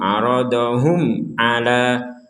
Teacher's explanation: Mim sukun bertemu ain, kita baca jelas. Tidak boleh dengung. Aradahum 'ala hum a seperti itu.